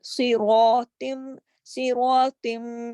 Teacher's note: صاد موٹا, را موٹا, طا موٹا